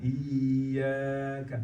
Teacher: Dan iyyaka ya tasdid. Pastikan ya tasdidnya double ya, jangan sampai terpanjangkan. Iyyaka, maka perlu aksentuasi di ya tasdidnya.